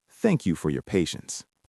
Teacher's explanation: Notice how the voice naturally goes down at the end of the sentence. It is not a question.